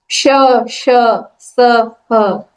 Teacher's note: ऊष्माण श, जिसमें थोड़ा सा प्राण वायु लगती है.